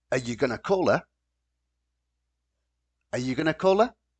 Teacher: this word are becomes just uh we turn this into the schwa